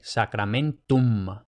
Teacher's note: los hispanohablantes tendemos a pronunciar la M al final de la palabra como una N, pero no, tiene que ser una M